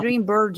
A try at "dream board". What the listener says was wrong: Dream board. Board. Yeah, because if not, it's bird, dream bird.